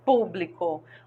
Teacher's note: olha a antepenúltima é a mais forte hein é acentuada por que todas as palavras proparoxítonas são acentuadas · a antepenúltima é a mais forte, inclusive é acentuada